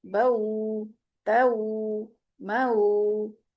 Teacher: दो हरकत जितना ही टाइम लगेगा लीन को अदा करते हुए भी। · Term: वाव लीन